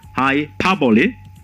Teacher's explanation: The intonation is on the syllable pa